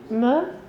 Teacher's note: Et si je fais M, ça passe par le nez.